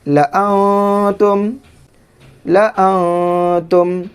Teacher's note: اب اس نون ساکن کے بعد تا حروف اخفا میں سے ہے تو نون ساکن میں اخفا کریں گے۔